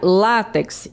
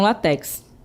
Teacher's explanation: Então, observe aí que eu tenho o acento tônico é no lá e não no final. Então a gente pronuncia látex e não latex, certo?